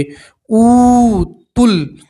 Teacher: یہ الف نہیں پڑھیں گے، تا کو سیدھا لام سے ملا دیں گے